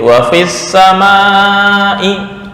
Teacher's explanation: enggak boleh dipanjangkan di fa